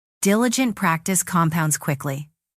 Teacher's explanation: Stress diligent, stress compounds, stress quickly.